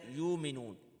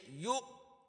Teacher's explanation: یا حمزہ پیش یو، اس کو آپ نے جھٹکے کے ساتھ پڑھنا ہے